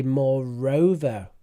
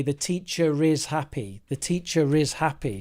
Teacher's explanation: You might want to have a little look at connected speech, because I noticed you said more over, but in English, in British English, we actually link that. So when a word ends in the R, but the next word begins with a vowel, we say moreover. We put the R in, moreover.